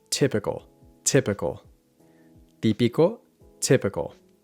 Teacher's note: the Spanish T is pronounced with the tongue against the top teeth not against the roof of the mouth